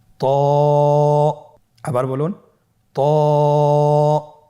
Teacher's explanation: এটা উচ্চারণের সময় অবশ্যই মোটা করতে হবে এবং উচ্চারণ করার সময় এক আলিফ টেনে পড়তে হবে আমার সাথে বলুন ত আবার বলুন ত এর মাখরাজ কোন জায়গা থেকে আপনারা স্ক্রিনে দেখতে পাচ্ছেন জিহ্বার আগা সামনের উপরের দুই দাঁতের গোড়ার সঙ্গে লাগিয়ে উচ্চারিত হয়। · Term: মোটা হরফ